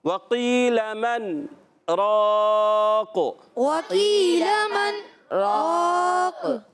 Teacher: واؤ ادا ہوتا ہے ہونٹوں کی گولائی سے، واؤ پر زبر ہے، حرکتیں نہیں کھینچیں گے۔